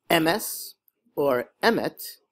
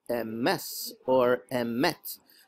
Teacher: they put the accent on the first syllable which is called Miller L instead of on the last syllable